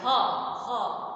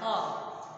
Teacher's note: ह को बोलेंगे तो इसका उच्चारण कंठ है, गले में ही आवाज रह जा रही है, ह, अंदर जोर पड़ रहा है, ह।